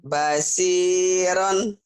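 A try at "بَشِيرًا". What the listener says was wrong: Shinnya nggak keluar tuh. Shin. Bashiron. Shin. Bashi.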